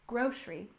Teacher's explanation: we stress the first syllable in grocery